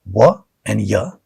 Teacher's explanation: They are called semi-vowels in English. There is no blockage of an air in articulation of wa and ya.